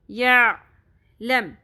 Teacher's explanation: عین کے مخرج پہ فوکس کریں، باریک آواز میں وسط حلق سے اپنے آواز نکالنی ہے